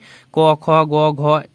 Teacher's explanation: ये सब कंठ से उच्चारित करते हैं, इसे हम लोग कहते हैं कंठ्य वर्ण